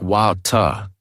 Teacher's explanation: In American English, it is often pronounced like water or water, where the T sounds almost like a quick D. In British English, it might sound more like water, with a clearer T sound at the end.